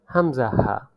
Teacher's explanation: হলকের শুরু হইতে উচ্চারিত হয় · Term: এক নং মাখরাজ